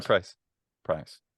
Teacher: it sounds like it's the first component of the diphthong is just held longer